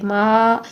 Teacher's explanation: 4 second کے لیے ہم اس کو لمبا کریں گے، ما، الف کو ہم 4 سیکنڈ کے لیے لمبا کریں گے، مد ہے یہاں پر